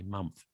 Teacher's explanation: Sometimes the THs becomes F.